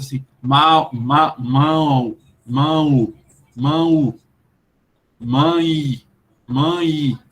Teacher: mãe mão é tudo nasal não é só uma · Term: nasalização